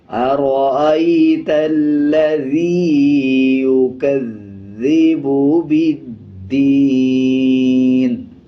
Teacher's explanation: اب جیسے ارأیت الذی یکذب، ذال کے اوپر شد ہے، مضبوطی کے ساتھ ادا کریں گے، پچھلے الفاظ کے ساتھ ملا کے پڑھا جائے گا اور ذال کو نرم پڑھا جاتا ہے۔ جب ذال کو ادا کریں گے تو زبان کی نوک دونوں دانتوں کے درمیان لگائیں گے تب ذال ادا ہوگا۔